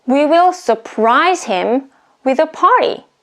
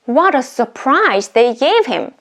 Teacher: the surprise is a noun but we put the stress on the second syllable